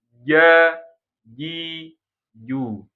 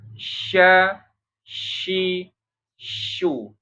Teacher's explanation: Ini kan pangit-langit, ini lidah tengahnya nih. Kalau kalau Jim nempel banget tuh kuat. Tapi kalau syin enggak sampai menempel banget. Masih ada rengga, ada celah sedikit ya.